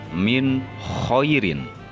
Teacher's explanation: nun sukun bertemu dengan kho, dibaca jelas